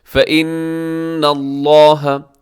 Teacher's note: کے بعد فا ہے، تو یہاں اخفا کیجیے گا، فإن اللہ، نون مشدد پہ غنہ کیجیے گا اور لفظ اللہ پر پڑیے گا، اس سے پہلے زبر ہے،